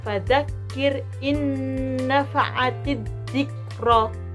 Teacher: Di situ ada nun sukun bertemu dengan nun. Jadi nun sukunnya melebur ke nun berikutnya. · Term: idgham bigunah